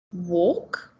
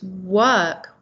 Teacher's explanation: so instead of or we have an er sound